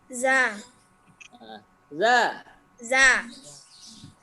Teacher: Jadi intinya tidak ada hembusan nafas